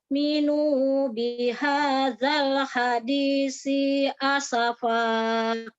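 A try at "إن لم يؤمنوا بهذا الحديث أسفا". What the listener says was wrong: Sa-nya ujungnya keluarin biar tidak seperti huruf sin, Umi, huruf sa-nya. Huruf sa-nya ya, harus keluar ujung lidahnya sedikit. Kalau tidak keluar dia seperti huruf sin.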